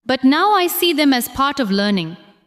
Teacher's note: Stress now, see, part, and learning.